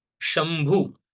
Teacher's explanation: after anusara there is bh and therefore we replace that anuswara with m